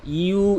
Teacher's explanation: এখানে ইউ কিন্তু এক আলিফ টান রয়েছে এক আলিফ টেনে পড়তে হবে